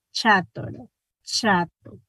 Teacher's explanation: Sentimos que la A también se pronuncia palatal.